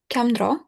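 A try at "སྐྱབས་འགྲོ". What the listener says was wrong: Nice. There's no M in the word.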